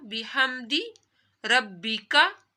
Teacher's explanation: با کے اوپر تشدید ہے تو با 2 دفعہ پڑھا جا رہا ہے